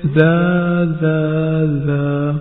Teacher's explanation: زال کی ادائیگی میں زبان کی نوک کو اوپر کے سامنے والے 2 دانتوں کے کنارے سے لگا کر زال کی ادائیگی کی جاتی ہے